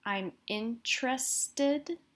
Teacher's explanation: it almost sounds like I'm saying T followed immediately by an R